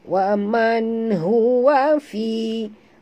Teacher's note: nun mati atau nun sukun dia bertemu dengan ha, tidak boleh dengung izhar halqi.